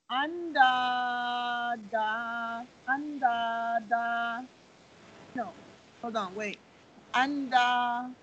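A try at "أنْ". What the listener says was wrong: On waw, we have sukoon, not fatha. On waw, we have shadda. Have shadda.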